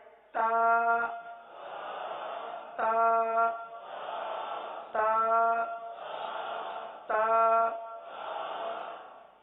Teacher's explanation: ता दाल तौ, इनमें ता भी है। तो जबान की नोक को आपने दांतों की जड़ पर लगानी है